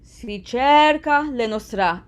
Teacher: you make the che of cerca longer